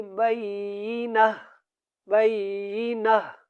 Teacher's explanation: یہ جو تا گول ہے یہ اس میم کے ساتھ ملے گا۔ آیتم بینہ، یہ جو تا گول ہے یہاں پہ یہ ہا میں بدل جائے گی اور ہم پڑھیں گے بینہ بینہ۔